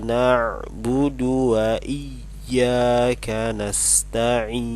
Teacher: Jadi tidak dibaca panjang iyyaka, tapi harus ditekan.